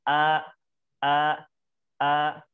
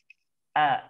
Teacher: hamzah keluar di tenggorokan paling bawah